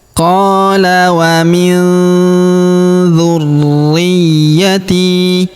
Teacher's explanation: nun sukun bertemu huruf dzu, maka nun sukunnya melebur ke huruf dzu, kita baca dengung dan samar. Dengungnya kita tahan dua sampai harakat ya. · huruf ri kita tahan dan kita tekan karena terdapat tanda tasdid di atasnya